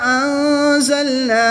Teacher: نون ساکن کے بعد زا حروف اخفا میں سے ہے تو یہاں پر اخفا ہوگا یعنی غنہ زمانی کر کے پڑھیں گے